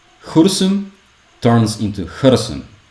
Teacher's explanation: I'm just like saying ooh without rounding